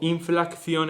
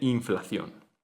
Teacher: el sonido oclusivo velar sordo eh se añade de manera epentética como caso de ultracorrección. Esto da lugar a discrección en vez de discreción o inflacción en vez de inflación.